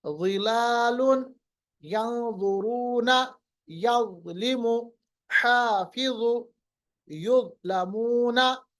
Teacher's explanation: ज़ाल को आप अपोजिट करने के लिए ज़ा को हम मोटा पढ़ेंगे।